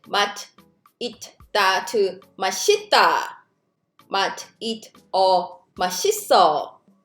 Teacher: So 이응, we already know that's silent. So this 시옷 actually blends to the next syllable. That's why it sounds like 맛있다, 맛있어. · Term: sound shifting, sound blending